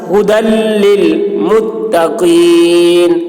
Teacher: یہاں سے حمزہ اور ہا ادا ہوتا ہے، اس ہا کی آواز تھوڑی بھاری ہوتی ہے۔ ھدی، دال کو لام سے ملا کر پڑھیں گے، یا کو نہیں پڑھا جائے گا